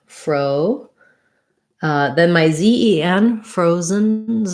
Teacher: frozen first syllable stress letter o does say the o diphthong